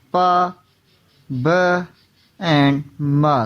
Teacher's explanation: Bilabial sound produced by the bringing both lips together. Bilabial में अपर और lower lips आप में टच करते हैं और साउंड प्रोड्यूस होता है, उसे हम bilabial साउंड बोलते हैं।